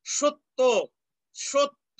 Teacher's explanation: তোমরা তো জানোই এটা, যে অ এর উচ্চারণ বিবৃত হয়ে যাবে যদি জফলা থাকে। অ ধ্বনির পরে যদি জফলা যুক্ত ব্যঞ্জন বর্ণ থাকে, তাহলে অ এর উচ্চারণ বিবৃত বা ও এর মতো হয়